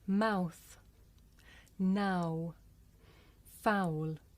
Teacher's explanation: This is a diphthong, a double vowel sound. The shape the mouth makes changes from the beginning of the sound to the end. It's pronounced ow. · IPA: aʊ